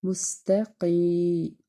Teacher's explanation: یا کے پیچھے زیر ہونے کی وجہ سے یہ مد اصلی ہے اور اس کو ایک الف کے برابر ہم کھینچ کے ادا کریں گے